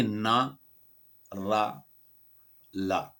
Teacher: जो व्यंजन जीवा का अग्री भाग, अग्र ऊपरी तल, जीव का ऊपर का है, सब अग्र ऊपरी तल जीव का अग्र ऊपरी हिस्सा को ऊपरी मसूड़ों को स्पर्श करते हुए बोले जाते हैं, वे वर्त्स व्यंजन कहलाते